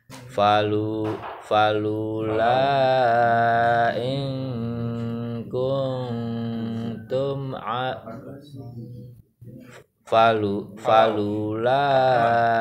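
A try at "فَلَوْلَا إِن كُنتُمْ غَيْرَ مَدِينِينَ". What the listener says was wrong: falau. Bukan falu, falau.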